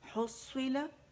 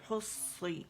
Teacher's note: صا جو ہے یہ موٹا ہے اور اس کے اوپر شد ہے، اور اس کو جماؤ دیں گے، سٹریس دیں گے. ٹھیک ہے، حصی، اور بہت زیادہ جماؤ نہیں دیں گے کہ یہ 3-4 صاد بن جائے.